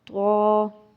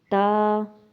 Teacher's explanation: اب ہم آواز حروف، ہم آواز حروف کا مطلب یہ ہے کہ جو ملتے جلتے حرف ہوتے ہیں لیکن ہمیں اس کی پہچان تلفظ سے ہوتی ہے اگر ہم اس کا صحیح تلفظ ادا کریں گے۔ تا، طا، طا تھوڑا موٹا ہے لیکن تا باریک ہے، لیکن ہم آواز ہیں، لیکن ہم نے اس کے تلفظ صحیح پڑھیں گے تو یہ ٹھیک ہو جائے گا۔